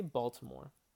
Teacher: we really stress the first syllable